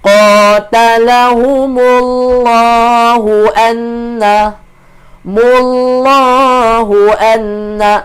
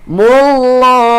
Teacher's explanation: Dia baca panjang dua harakat mad asli pada kalimah Allah kalau dibaca sambung. Tapi kalau berhenti dia akan jadi ma'rid disukun lah.